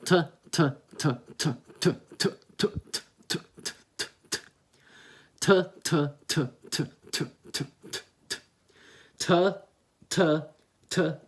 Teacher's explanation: you have that breath coming out, and you really want to have that breath in there. So your tongue placement close to the middle of your lips.